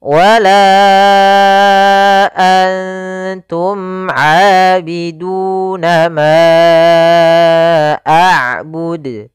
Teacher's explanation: Pada lafal wala antum, pada lafal la kembali lagi kita dapati hukum tajwid berupa mad jaiz munfasil, yaitu ditandai dengan adanya huruf hamzah yang datang setelah huruf mad, di sini huruf alif. Maka kita panjangkan untuk huruf la sepanjang 4 harokat